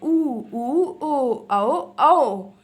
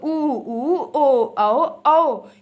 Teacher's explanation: आपका मुंह जो है वो गोल हो जाए बोलने पे, होंठों की स्थिति आपकी गोल हो जाएगी। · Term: व्रतमुखी